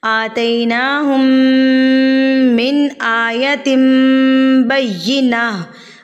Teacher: तनवीन के बाद अगर हुरूफ़ बा आ जाए, अगर हर्फ बा आ जाए तो तनवीन या नून साकिन को हम मीम में तब्दील कर देते हैं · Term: इक़लाब